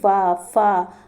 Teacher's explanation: निचला होठ जो रहता है ऊपर के दांतों को छूकर और बोलता है